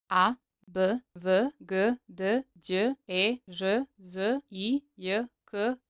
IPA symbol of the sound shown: ə